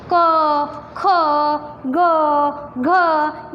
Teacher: क ख ग घ, ये सारे कंठ द्वारा उच्चारण किए जाते हैं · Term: कंठ्य वर्णन